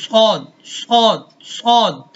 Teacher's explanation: ٹھیک ہے، دو نیچے والے سامنے والے جو نیچے دانت ہیں، ثنایا سفلا کے کنارے پر زبان کی نوک لگے گی، اور ثنایا علیا اوپر والے دو دانت کے ساتھ لگ کر حرف صاد ادا ہوتا ہے۔ یاد رہے، صاد میں سیٹی بھی بجے گی، لیکن اس کے ساتھ ساتھ اس کی جو آواز ہے یہ موٹی ہوگی، اور اس کے اندر جو زبان ہے وہ اوپر والے تالو کے ساتھ بھی کیا ہے، ٹچ ہوتی ہے، تو حرف صاد ادا ہوتا ہے۔